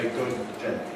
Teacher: We had a release at the beginning of day, but between them we had a long hold. We didn't have a separate approach, hold, release for the two Ds. We don't say good day, we say good day. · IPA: [ˈgʊd̚ ˈdeɪ]